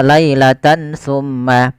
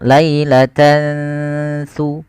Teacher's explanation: Yaitu cara membacanya tan awalnya lailatan, ketemu saat tidak jelaskan suara n-nya. Tidak jelaskan suara nun, tidak dibaca lailatan summa. Tapi disamarkan, maka dinamakan dengan ikhfa.